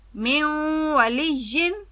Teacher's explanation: نون مکمل طور پر ختم نہیں ہوتا بلکہ غنہ کی صورت اختیار کر لیتا ہے۔ ناک سے ادائیگی کو غنہ کہتے ہیں، اسے ادغام ناقص کہتے ہیں، یعنی نون کا ناقص طور پر بعد والے حرف میں ملنا۔